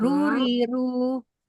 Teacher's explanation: Ini dia di makharijul hurufnya di ujung lidah, nah, di bawahnya nun ya. Huruf lidahnya ini bergetar. Ya, bergetaran itulah yang menimbulkan mengeluarkan suara ro. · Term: huruf ro